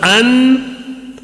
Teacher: غنہ کا مطلب آواز کو ناک میں تھوڑی دیر روک کر غنہ کر کے پڑھیں گے، 1 الف کے برابر